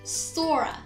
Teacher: hear that intruding r between the words soar and uh sora soar ends with or sound and ah is of course a vowel so a sneaky little r pops in there